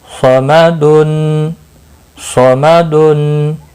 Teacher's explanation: صاد مستعلیہ ہے پر پڑھا جائے گا.